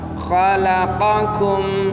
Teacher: Khalaqakum, qa itu di tenggorokan, kum itu di atasnya, di atas tenggorokan. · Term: qaf dan kaf